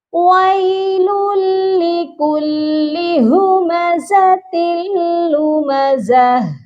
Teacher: تا کی تنوین کو بغیر غنّے کے ہم ملائیں گے، تن نہیں پڑھا جائے گا، تل پڑھا جائے گا